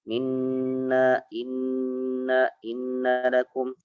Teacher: nun tasydid ditahan lagi Pak ya. Sedikit ya.